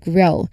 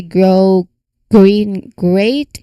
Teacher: The G sound also from the back of the throat directly connects to the R sound grow. Listen to how the voice G transitions seamlessly into the R sound. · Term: G cluster, GR cluster